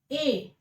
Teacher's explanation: ए होगा ये कंठ, और ए जो होगा ये कंठ और तालव्य होता है